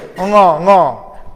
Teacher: You can find it is a nasal to the soft palate.